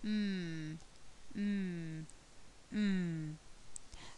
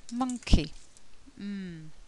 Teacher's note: the lips close and they block the air flow so close your lips block the air flow and the air escapes through the nose · it's voiced and there's very little air flow produced